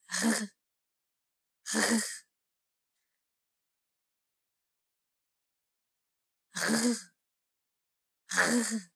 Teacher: This sound is voiced, meaning you should feel vibrations coming from your throat and chest.